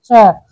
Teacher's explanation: तालव्य होता है, जीभ मुंह के ऊपरी हिस्से से टकराती है